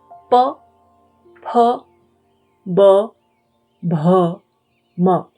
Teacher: So for the first five, the sound is made by the lips.